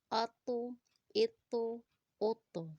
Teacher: کیونکہ طوا جو ہے ہمارا حروف قلقلہ میں سے ہے، اس کو موٹا بھی پڑھیں گے اور اس کی آواز کو ہلا کر بھی پڑھیں گے